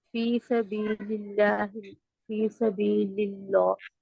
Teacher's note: فلیقاتل میں قاف موٹا، فی سبیل اللہ، فی سبیل اللہ، للہ میں اللہ میں جو لام ہے وہ باریک پڑا جائے گا کیونکہ اس سے پہلے زیر ہے